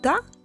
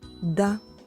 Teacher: зубами це тверді приголосні звуки якщо прикласти долоньку до горла то вимовляючи звук т ми відчуємо Що голосові зв'язки не вібрують тому це глухий приголосний звук а вимовляючи звук д ми відчуємо Що голосові зв'язки вібрують Тому це дзвінкий приголосний звук